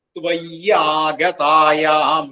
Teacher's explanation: വികൃത പിന്നെയുള്ളത് ത്വയി എന്നും ആഗതായാം അവിടെ കൂടി വരുമ്പോഴ് ത്വയി ആ അവിടെ യകാരം ഇരട്ടിച്ച് ത്വയ ഗതായാം എന്നാവും